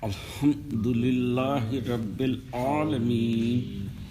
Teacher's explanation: تو یہ عین جو ہے وہ نچلے حصے سے نکلتا ہے